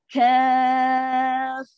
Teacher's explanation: Kaf dulu. Angin terlepas baru pergi ha. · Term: Lepas angin